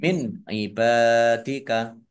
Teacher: nun sukun bertemu dengan huruf ain, bacaan idhar dibaca jelas